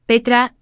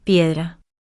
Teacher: La palabra petra tiene una diptongación en e que pasa a ser i e y una sonorización en t transformándose en d obteniendo así la palabra piedra.